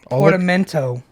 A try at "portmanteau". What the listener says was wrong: Nope, that is incorrect, sir. There's no E before the M. Portmanteau. You said portamento. No, it's not. There's no fucking second E. There's only one. Portmanteau. You are incorrect.